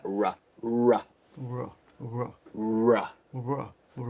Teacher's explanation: your tongue is going to the roof of the mouth right but it's never touching the roof it just rolls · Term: American R